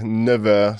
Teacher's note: the F of neuf becomes neuve with a kind of V sound when we're talking about 9h